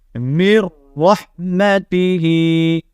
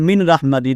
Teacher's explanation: ٹھیک ہے، نون کو نہیں پڑھیں گے کیونکہ نون ساکنے کے بعد جب لام اور را جائے تو پھر ادغام مال غنہ ہوتا ہے، یعنی ادغام بلا غنہ ہوتا ہے، یعنی غنے کے بغیر جو ہے نا ہم پچھلی حرف کو اگلے حرف کے ساتھ ملاتے ہیں